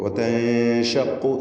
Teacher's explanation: സാക്കിനത്ത നൂനിനെ ഇഖ്ഫാ ഹഖീഖി നൽകി മറച്ചു മണിക്കണം, അവ്യക്തമാക്കി മണിച്ചുകൊണ്ട് ഉച്ചരിക്കണം. വതൻഷഖുൽ അർദു, ഖാഫിന് തഫ്ഖീം കൊടുക്കണം.